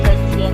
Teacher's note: fonem Y karena bentuk dasarnya sudah berakhiran dengan fonem I. Sehingga jika dalam penulisan morfem gajian tidak mencantumkan fonem Y, namun ketika kita membacanya fonem Y akan seolah-olah ada dalam pengucapan morfem gajian tersebut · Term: penambahan fonem Y